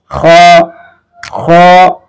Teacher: এটা হচ্ছে কণ্ঠনালীর শেষ ভাগ হতে উচ্চারিত হবে খ। একেবারে ইজি ভাবে খালি ছেড়ে দিবেন খ খ।